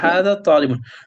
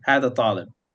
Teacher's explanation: So if you're continuing, you would say the vowel. But when you're stopping, you don't say it.